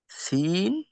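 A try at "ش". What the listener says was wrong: একই রকম হয়ে গেল না আপনার একই রকম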